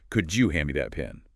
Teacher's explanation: Often becomes, could you hand me that pen? The D and Y sounds blend into a J sound.